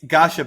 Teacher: It's Gasha, no T sound.